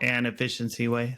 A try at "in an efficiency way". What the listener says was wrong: Well, it sounded like inefficient.